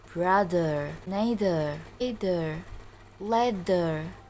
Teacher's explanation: to create friction between the tongue and the upper teeth